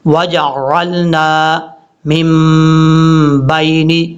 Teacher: وجعلنا. جیم کے بعد عین کو کلیئر کرنا ہے، حمزہ کی آواز نہیں آنی چاہیے. وجعلنا من بین.